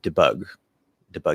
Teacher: it usually reduces because it's not the stress syllable